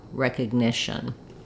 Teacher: You'll see it in the dictionary with an or an I sound, but basically it's a very reduced vowel. You want to move quickly from the sh to the n, shun, with almost no vowel there